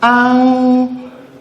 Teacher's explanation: this N comes before the K, and that is why it is a velar sound and not an alveolar sound